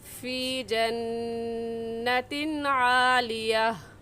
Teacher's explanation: तनवीन के बाद हरूफ हल्की में से आइन आ गया है, इसलिए इस तनवीन पर गुन्ना नहीं करेंगे और ऐसे कहेंगे फ़ी जन्नतिन आलिया।